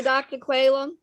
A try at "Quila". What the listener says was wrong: It's actually Dr. Quila, long I.